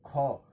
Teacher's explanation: ख एक ऐसा ध्वनि है जो महाप्राण भी है, अघोष भी है, कंठ भी है और स्पर्श व्यंजन है।